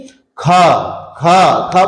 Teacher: बोलने में ज्यादा श्वास लग रहे हैं, ज्यादा अवरोध उत्पन्न हो रहा है। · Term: महाप्राण